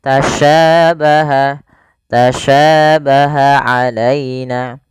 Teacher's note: Sya ini bagaimana cara pelafalannya dari tengah lidah kita, karena makhrajnya dari tengah lidah sya. Dan sya memiliki sifat namanya tafashi.